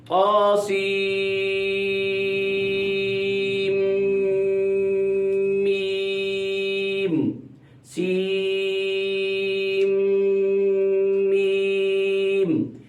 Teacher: سین کی نون کو میم کی میم میں ادغام کرنا ہے. لفظ میم، یہ لفظ میم کی یہ جو پہلی میم ہے اس میں ادغام کرنا ہے.